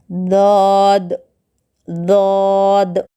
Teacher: زبان کے بائیں کنارے کو بائیں جانب کے اوپر کے داڑوں کو لگانے سے ضاد ادا ہوتا ہے